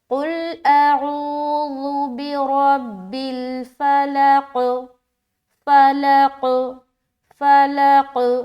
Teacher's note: یہاں پر جو قلقلہ ہوگا وہ تھوڑا اسٹرانگ قلقلہ ہوگا